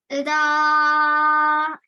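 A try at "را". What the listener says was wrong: Make it a tiny bit smaller. So just 2 seconds. Ra. Not too long. Okay, just a little bit longer than the normal ra.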